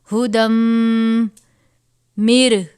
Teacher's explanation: میم مشدد ہے، غنہ کریں گے اور دال کو میم سے ملا دیں گے.